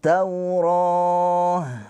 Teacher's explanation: Jadi alif lamnya dilewati enggak dibaca. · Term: Alif lam syamsiyah